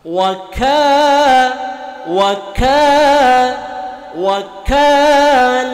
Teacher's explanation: Kav makhrojnya ada di Pangkal lidah dengan langit-langit yang lurus di atasnya agak keluar sedikit dari makhraj huruf qaf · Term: makhroj huruf Kaf